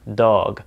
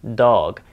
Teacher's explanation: d has a much softer sound than it does in English think of where your tongue is when you say the word dog it's behind your teeth towards the top of your mouth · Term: the D sound